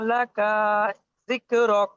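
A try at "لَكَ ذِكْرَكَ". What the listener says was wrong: লাকা, কাব জবর টান হয়ে যাচ্ছে, লাকা যিকরক।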